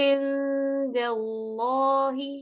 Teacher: عین آپ عین کو ہی ناک میں لے کے چلے جاتے، عین کی زیر پڑھنے کے بعد دال کے وقت آپ نے اخفا کرنا ہے۔